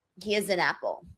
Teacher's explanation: So you can hear a Y glide in there.